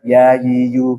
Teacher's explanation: tengah lidah bertemu dengan langit-langit atas, menyisakan celah yang lebih luas.